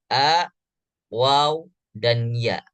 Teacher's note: Ini adalah huruf yang keluar daripada rongga mulut